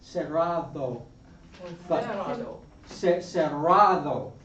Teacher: In Madrid, cerrado, they would pronounce that D there between two vowels, oftentimes as a TH.